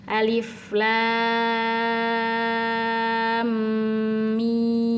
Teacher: Alif Lam Mim ini dibaca jadi setelah lamnya panjang en harakat didengungkan dulu dua harakat baru dipanjangkan lagi enam harakat mimnya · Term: idgam Mimi, idgham mimi